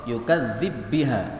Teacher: Yukadzibu biha, ini baknya ketemu bak boleh dibaca idgham.